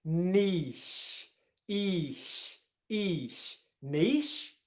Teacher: do you pronounce it with a long e sound and then a shh